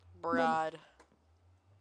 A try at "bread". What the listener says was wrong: Put the E back in bread. That's not even remotely close. I'd hope the bread isn't crunchy. It's supposed to be soft.